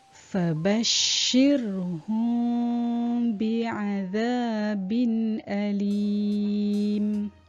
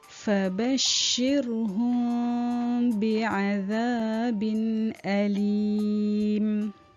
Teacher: ikhfa syafawi iaitu mim sakinah bertemu dengan ba dan cara bacaan didengungkan dengan kadar 2 harakat.